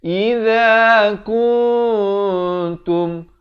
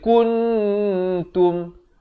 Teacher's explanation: Tapi kalau kita baca kuntum, panjang dah cantik tapi bunyinya ijlas, bunyinya izhar, salah. Dia kena bunyi ikhfa di sini, disamarkan. Nak kata nun pun tidak, ta pun tidak. Kuntum dan masuk saja tum, jangan panjang.